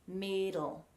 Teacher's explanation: place your tongue where the d should go so on that ridge further back not touching the back of your teeth